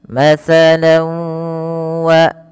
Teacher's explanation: masukkan tanwinnya kepada huruf wau tidak lagi dibaca matsalan WA tapi menjadi matala nunnya diganti dengan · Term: idgham bighunna